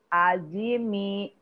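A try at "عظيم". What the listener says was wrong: Wi-nya lebih tebal. Coba pangkal lidahnya dorong ke dalam.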